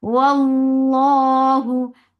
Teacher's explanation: Lafz jalala will be heavy because there is fatha before it, and it is always long, and here it is heavy because there is fatha.